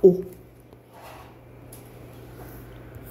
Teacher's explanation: 후설이면서 중모음에서 원순인 건 오